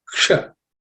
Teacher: has to be pronounced with the tip of the tongue pointing to the roof of your mouth